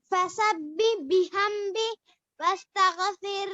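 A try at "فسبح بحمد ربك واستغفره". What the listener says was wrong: ربی کا ربی کا بھی بولو جی ربی کا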